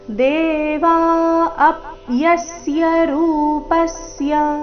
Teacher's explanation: ದೇವ ಎರಡು ದೀರ್ಘ ಅಪ್ಯಸ್ಯರೂ ರೂಪಸ್ಯ ಅಪ್ಯಸ್ಯ ಅ ಮತ್ತೆ ಯ ಮೇಲೆ ಆಘಾತ ರೂಪಸ್ಯ ನಲ್ಲಿ ಪ ಮೇಲೆ ಆಘಾತ ಬರಬೇಕು